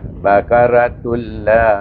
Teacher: La di atas la bertemu dengan alif baca dengan mat asli.